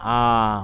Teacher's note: স্বরে আ উচ্চারণ করার সময় দেখবেন একদম জিহ্বা একদম নিচের দিকে থাকে আর জিহ্বা উচ্চারণ করে এবং মুখে এর মাঝখান থেকে উচ্চারিত হয়